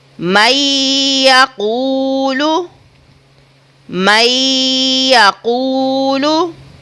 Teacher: ہم نے نون ساکن کو گننا کرنا ہے یا کے ساتھ